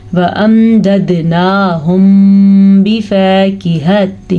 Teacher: میم ساکن کے بعد با آ گیا ہے, دونوں ہونٹوں کو بند کر لیں گے